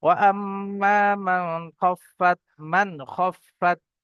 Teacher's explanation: এখানে গুণনা হবে না, বিনা গুণনায় জাহির করে তাড়াতাড়ি পড়তে হবে।